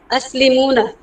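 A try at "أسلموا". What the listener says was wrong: আসলিমুনা আছে? নুন আছে? আসলিমু। ফাইনালি শব্দটা কি হবে?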